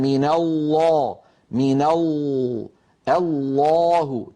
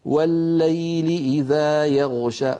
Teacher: يصاحب اللام المفخمة تقعر لوسط اللسان وتضيق في الحلق بخلاف المرققة.